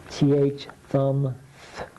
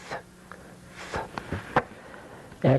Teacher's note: Still stick your tongue out but there's no voice sound.